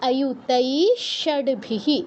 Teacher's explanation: এইকার দীর্ঘস্বর, তাই দীর্ঘ সময় নিয়ে বলছি। তো সংস্কৃত উচ্চারণের সৌন্দর্য কিন্তু এটাই, যেটা দীর্ঘ সেটা দীর্ঘ সময় নিয়েই বলতে হবে, আপনার একদম তাড়াহুড়ো করা যাবে না।